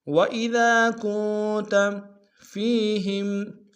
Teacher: وَإِذَا میں ذال کے سالف مدہ ایک اختتام میں کھینچیں گے، ذال کو باریک ادا کریں گے ، کاف کو نون ساکن کے سامنے غنہ کریں گے۔ وَإِذَا